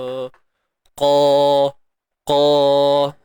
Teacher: Qa ni kita tebalkan. Huruf qaf tebal selamanya. Sifatnya apa? Isti'la. Terangkat pangkal lidah apabila menyebut hurufnya. Qa. Pastikan pangkal lidah kita terangkat.